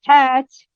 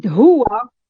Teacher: we have another glottal voiceless fricative, which is h, such as hat in English and huwa in Arabic.